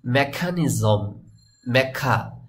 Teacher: ক টাকে ব্রিটিশ বা আমেরিকানরা খ এর মত উচ্চারণ করেন তো ওদের মত করে যদি আপনি উচ্চারণ করতে চান তাহলে মেখা